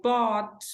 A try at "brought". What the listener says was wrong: Brought. Tem que colocar o R. Vai o R junto. Porque buy é bought, né? Buy, bought. You bring, brought.